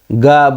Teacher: ग घ ङ जब बोलते हैं तो आवाज़ थोड़ी देर तक गूंजती रहती है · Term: घोष